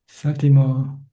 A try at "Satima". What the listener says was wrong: Satima with an A.